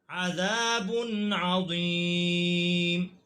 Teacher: یہاں پر غنہ نہیں ہوگا کیونکہ نون تنوین کے بعد حرف حلقی ہے